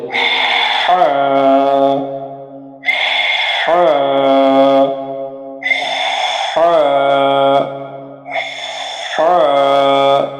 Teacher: হলকের শুরু হইতে গলাকে চাপিয়ে দিয়ে বাতাস বাহির করে 1 আলিফ টেনে পড়তে হবে